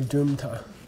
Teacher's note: in a lot of areas of Tibet, you might hear people say Drumta. Okay. They pronounce the M.